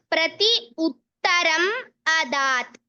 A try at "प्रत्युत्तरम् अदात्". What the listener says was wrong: अत्र प्रति उत्तरम् इति न मन्तव्यं, प्रत्युत्तरम् इति एव शब्दः, प्रत्युत्तरम् अदात्, परन्तु प्रतियोग उत्तरः इति एव तत्र शब्दः अस्ति, परन्तु शब्दः एव प्रत्युत्तरम् इति अस्ति।